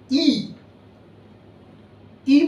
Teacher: ই বলতে গেলে দেখছেন যে ঠোঁট দুটোর এই পাশ দুটো প্রসারিত হয়ে যাচ্ছে, ই। এবারে এ, ঠোঁট কিন্তু আরেকটু ঢুকে এসেছে।